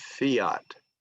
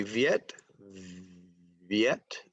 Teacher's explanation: Okay, if I say Viet, Viet, the V sound is voiced. The F sound in fiat is voiceless